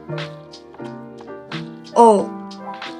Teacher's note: Untuk huruf O, lidah berada di posisi belakang dan sedikit lebih rendah dari vokal U dan bibir bulat.